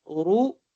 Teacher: را کو پڑھتے وقت ہونٹ گول بھی ہوں گے پیش کی وجہ سے، اور را کو پر بھی پڑھیں گے